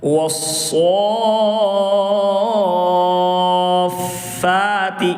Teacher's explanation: اس میں مد لازم ہوگا کیونکہ حروف مد یہاں پر کھڑا زبر الف مدہ ہوگا، حروف مد کے بعد والے حرف پر تشدید ہے، اس لیے مد لازم ہوگا۔ مد لازم کو 4 سے 5 الف کی مقدار کھینچ کر پڑھیں گے۔